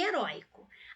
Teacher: Aqui eu também tenho ditongo aberto oi. Em heróico, a sílaba tônica é a penúltima